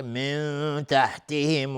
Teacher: نون ساکن بهش تای دو نقطه اخفای حقیقی